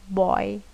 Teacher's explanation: This diphthong starts from a half open back vowel situated between cardinal vowels and end in a front closed vowel